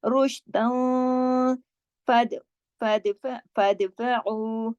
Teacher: दाल पे हमने कलकला किया, क्यों? क्योंकि दाल पे जज़म है, क्योंकि दाल उन हरफों में से है जो कुतुबिन जद्दिन के हैं।